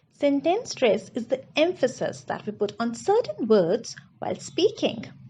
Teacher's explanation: I stressed on the words emphasis, certain words, and speaking. These are the most important words in the sentence, and I've stressed upon them because I want you to pay attention to them.